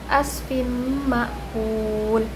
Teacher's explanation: Karena tanwin bertemu dengan huruf mim. Cara membacanya ditahan dan didenggungkan. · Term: idgam bighunah